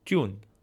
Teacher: in eastern it's tune using an unaspirated t sound